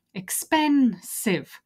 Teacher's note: it's a three syllable word expensive where's the stress the stress is on pen